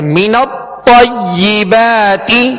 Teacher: بغیر ہونٹوں کو گول کیے اس کی زبر جب ادا کریں گے تو آواز اور منہ کھول کر ادا کریں گے